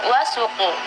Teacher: ketika membaca wasuqu harf sin harusnya ditipiskan sekali. Tadi terkesan atau terdengar agak tebal.